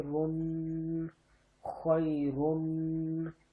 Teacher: را کے اوپر دو پیش ہیں تو گننا کر رہا ہوں، ناک میں آواز لے جانے کو کہتے ہیں